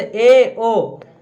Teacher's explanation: जिन स्वरों का उच्चारण करते समय जिह्वा संवृत स्वर से कम ऊंचाई पर उठती है तो उसे अर्ध संवृत स्वर कहते हैं।